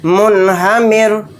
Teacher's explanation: یہاں پر رائے ساکنہ سے پہلے زیر ہے اور زیر اصلی ہے تو اس لیے اس رائے ساکنہ کو باریک پڑھیں گے